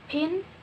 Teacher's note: In the word pin, there is like an invisible H between the P and I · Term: aspirated P